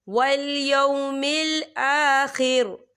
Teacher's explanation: وقف کی صورت میں را جو ہے ساکن ہو جائے گا